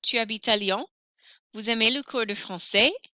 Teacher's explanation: For intonation, you raise your voice at the end.